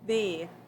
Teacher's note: when I say the, my vocal cords are vibrating, so that means the TH is voiced, and I would cross it out to show me that it's voiced.